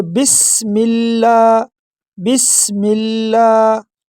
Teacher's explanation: لفظ اللہ کو باریک پڑھنا ہے کیونکہ اس سے پہلے حرکت جو ہے وہ زیر ہے۔ · یہ شروع میں جو سین ہے اس میں سٹی کی آواز نکالنی ہے۔